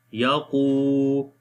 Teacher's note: Qaf we read in heavy sound and waw is madda letter, we long also